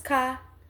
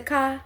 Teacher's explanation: the omission of the R sound, so car becomes ka